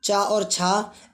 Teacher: चा और छा, इनका उच्चारण स्थान तालव्य होता है